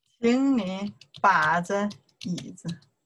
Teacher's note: 请, the third tone. 你, the third tone. 把, third tone. 这, the first tone.